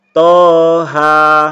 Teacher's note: ini dibaca panjang masing-masing dua harokat